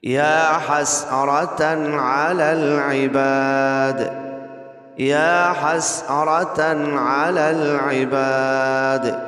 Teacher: ہیں، لیکن وقف کرتے ہوئے ایک بات کا خیال رکھنا ہے، دال پہ قلقلہ لازمی کرنا ہے، اگر قلقلہ نہیں کریں گے تو دال ادا ہی نہیں ہوگی